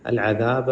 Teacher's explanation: عین پڑھتے ہوئے حلق پہ زور دیں. ذال زبان نکال کے.